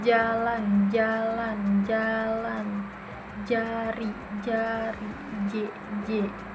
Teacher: ujung lidahnya menyentuh alveolar ridge